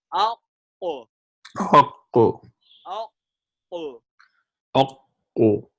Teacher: This is deepest part of the tongue touching the soft palate.